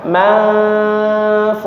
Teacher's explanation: dia samar-samar disertai dengan dengung ya hukumnya ikhfa jadi dibacanya manf Ya, seperti itu ya.